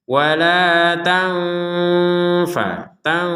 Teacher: Nun sukun bertemu fa ini kita baca dengan samar, ada dengung dikit. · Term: dibaca dengan samar